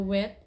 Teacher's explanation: the tongue body is raised near the velum and the lips are rounded at the same time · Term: labiovelar